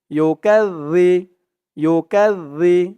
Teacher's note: আর এখানে জালের উচ্চারণটা একদম নরম পাতলা করতে হবে। জিব্বার মাথা ওপরের দাঁতের মাথার সাথে লাগবে এই জালের উচ্চারণটা করার সময়।